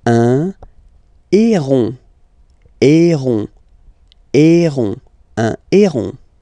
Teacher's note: E, accent aigu, the sound is E, E. And then you get this O-N, nasal, on · as usual in French, H is not pronounced, so you don't pronounce it.